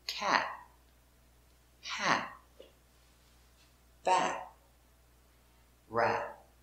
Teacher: If you don't smile, ah, ah, smile makes the correct sound, ah. And also, when you finish with a T, it is a stop T. We don't say cat. We put our tongue up and we stop. Cat. Go to the T position, but don't complete.